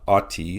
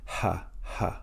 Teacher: note the addition of the H sound at the beginning of the word like in the word hat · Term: rough breathing